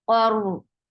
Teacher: Qaf is heavy for fatha, open your jaws, attached with ra. Ra will get sifa of the wasut.